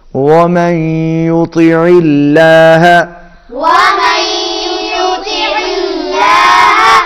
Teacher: لام اللہ کا لام باریک ہوگا